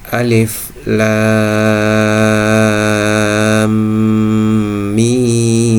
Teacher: Lam dibaca sepanjang enam harakat. Akhir dari huruf lam adalah mim sukun. · Huruf mim awalnya adalah huruf mim yang bertasdik, sehingga akhir dari huruf lam mim sukun bertemu dengan awal mim huruf mim yang bertasdik, akan terjadi hukum isgham mimi, yaitu huruf mim ketemu mim bertasdik. Di sini akan terjadi penekanan.